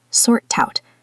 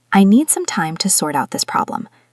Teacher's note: the key is the T linking to out